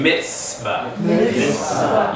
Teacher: It's a TS sound, and you have to actually start with a T and end with an S. So formalize the T in your mouth, but sound an S instead.